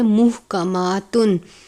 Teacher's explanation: باریک ہا ہے، حلق سے ادا کرتے ہیں. محکماتن، میم کے اوپر کھڑی زبر ہے، 1 الف کے جتنا لمبا کریں گے.